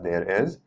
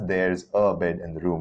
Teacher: There's a contraction, there's an apostrophe there. So we'll read it as there is, there, but we'll pronounce it as there's a bed in the room when we're talking